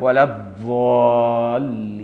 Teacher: أنا صليت ورا عراقيين بيقولوا الضاد شوية ضاء لكن مش ضاء خالصة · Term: الضاد الأصلية